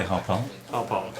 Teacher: Emphasis on the second syllable.